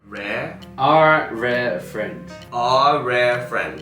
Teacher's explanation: we got the rolled R's. We've also got the open elongated our, right? It's not our part. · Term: open elongated vowels